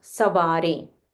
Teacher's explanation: So here in the first we say samhare, and in the second we say savare. There's a nasal wa, savare. It's not samvare, savare.